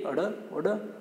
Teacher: जीभ पहले ऊपर उठती है, मूर्धा को स्पर्श करती है, फिर एक झटके के साथ नीचे आती है